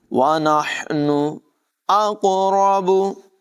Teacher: قاف میں قلقلہ بھی کریں گے، اس کو پر آواز میں موٹی آواز میں پڑھیں گے